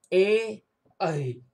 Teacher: कंठ, तालु ये दोनों मिलकर ए और ऐ का उच्चारण करता है।